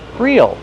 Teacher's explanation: It's the same pronunciation. Use a long E sound. Real. Then the dark L.